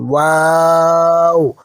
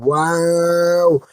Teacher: এটি উচ্চারণের সময় দুই ঠোঁট গোল হবে, কিন্তু ঠোঁট দুটো যেন একে অপরের সাথে পুরো লেগে না যায়, মাঝখানে একটু খালি জায়গা থাকবে।